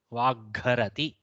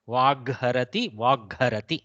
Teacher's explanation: So Mahaprana, that Hakara, basically we are generating a new Gakara, but because of the Hakara being Mahaprana, we transit that to Mahaprana version